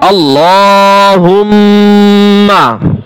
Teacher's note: হা মিম পেশ হুম, মিমে তাসদীদ রয়েছে, এক আলিফ পরিমাণ গুণনা হবে। মিম জবর মা, আল্লাহুম্মা।